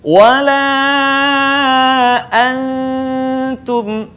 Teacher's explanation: Perhatikan kata antum dibaca menutupi huruf berikutnya.